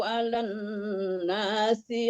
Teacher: Nggak boleh alan, nggak ada panjang lannya ya, langsung ya. Alan walaupun sebenarnya panjang, kalau di depannya bertasdid langsung disambar ke tasdidnya.